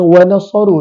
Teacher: huruf sad keluar daripada hujung lidah